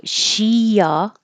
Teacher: you're going from a high position for the e sound and then sliding down for an uh